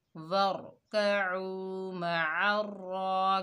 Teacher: वक्फ की हालत में नून का ज़बर ख़त्म हो गया और नून साकिन हो गई तो यहाँ वक्फ का नाम क्या हुआ, वक्फ बिल अस्कान।